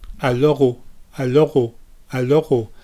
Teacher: i'm keeping the tongue forward and letting the back of the tongue rise up for the r and going straight into the oh · keep the tip of your tongue down for the l and allah don't raise the tip of your tongue up like an english speaker would normally do